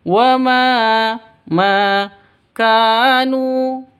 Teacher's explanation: ka panjang dua ketukan, mad asli atau mad tabi'i karena ada alif diawali dengan fathah